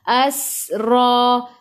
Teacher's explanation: Sin ada sukun masuk ke dalam sin dan bunyikan sifat huruf sin safir. Ra baca dengan tebal, ra baris atas.